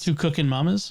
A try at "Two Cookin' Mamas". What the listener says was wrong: Cookin', not cook-in.